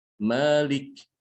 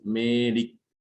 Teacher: mencampur sebagian suara huruf mad yang alif ini dengan sebagian daripada suara ya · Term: imalah